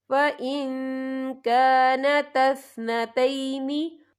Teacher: یا دیکھیں فَإِن، یہاں نون ساکن ہے، نون ساکن کے بعد جو ہے کیف آ رہا ہے، اور کیف جو ہے اکفا کا ورڈ ہے تو ہم یا اکفا کریں گے، نون ساکن کی آواز کو ناک میں چھپائیں گے